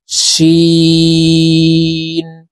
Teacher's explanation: শিন উচ্চারণ করার সময় বাইরে বাতাস বের করে উচ্চারণ করতে হবে।